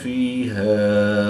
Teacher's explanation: یا ساکن سے پہلے زیر ہے تو یا مدہ ایک الف یعنی 2 حرکات کے برابر کھینچ کر پڑھیں گے